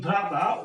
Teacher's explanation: And pita, here we have accent on the last syllable, and in bhrata we have accent in the first syllable, root syllable